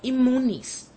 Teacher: The letter N, which is required by strict adherence to fact, is forced by the sound of the M which follows to change into another M.